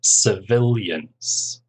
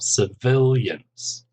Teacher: civilians three syllables stress on the second syllable